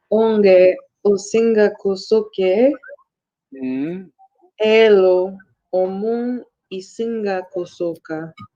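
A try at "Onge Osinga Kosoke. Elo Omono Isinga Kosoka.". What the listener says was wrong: Yeah, very good. Very good.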